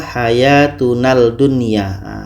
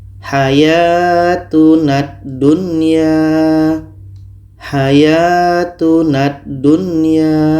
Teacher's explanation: Lam tidak kita baca lagi. Tapi bunyi na ini terus masuk ke dah. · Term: idgham syamsiyah